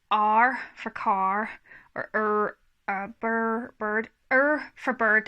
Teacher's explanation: because I've got a Northern Irish accent, R is a really strong sound in our kind of accent